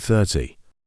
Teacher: this word also has two syllables 30 we stress the first syllable